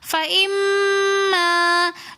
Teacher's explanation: میم مشدد ہونے کی وجہ سے ہم نے غنہ کر کے پڑھا